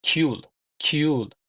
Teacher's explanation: R harfi patchimda so'z oxirida kelganda l deb talaffuz qilinadi.